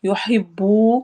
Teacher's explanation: واو ساکن ہے اور اس سے پہلے پیش آ رہی ہے تو اس واو کو ہم دو حرکہ لمبا کریں گے، بالکل ویسے ہی جیسے کہ ہم الٹی پیش کو کرتے ہیں۔ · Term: واو مدہ